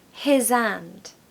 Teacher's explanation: We're not going to say his and have a break between those. No, we're going to blend them. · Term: blending words together